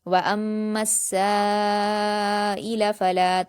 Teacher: کہ آپ سائلہ پڑھتے ہوئے سائلہ نہیں پڑھیں گے، ٹھیک ہے، حمزہ کی آواز نکالنی ہے، یا کی آواز نہیں ہے کیونکہ یہاں پر یا نہیں حمزہ ہے · دیں گے، سین پر الف مدہ ہے، دو حرکات کھینچتے لیکن الف مدہ کے بعد حمزہ اسی کلمے میں ہے تو مد متصل ہوگا اور اس کو بھی ہم 5 حرکات کے برابر کھینچیں گے ، حمزہ کو جلد پڑھیں گے اور لام کو بھی جلد